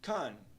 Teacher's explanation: Já na segunda palavra, contest, nós temos o som E invertido na primeira sílaba, som que soa como a. A pronúncia da primeira sílaba fica então con.